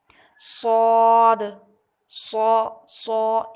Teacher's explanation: موٹی آواز ہوگی اور ساتھ ہی میں سیٹی والی آواز بھی ہوگی